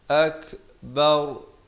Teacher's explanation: Dan kalau waqaf, ra tu jadi tebal